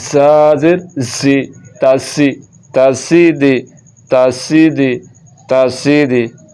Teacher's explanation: تو دال نہیں پڑھنا, زا پڑھنا ہے, سیٹی کی آواز کے ساتھ پڑھنا ہے